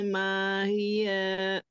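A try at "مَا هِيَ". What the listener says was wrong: Mahi, kalau berhenti di situ. Mahi. Mahi, mahnya panjang.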